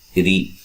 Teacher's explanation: اس را کو باریک پڑھیں گے اور را کے نیچے زیر ہے